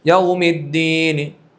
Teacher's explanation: وقف بالاسکان کی حالت میں طول، توسط، قصر کر کے اعلان کر سکتے ہیں، اور روم ہے تو روم کی حالت میں توسط اور طول نہیں ہوتا، صرف قصر ہوگا کیونکہ حرکت باقی رہتی ہے، خفیف حرکت روم کی حالت میں آپ پڑھیں گے یوم الدین، تو اس حرکت باقی رہنے کی وجہ سے یہاں توسط اور طول نہیں ہوگا۔ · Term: وقف بالروم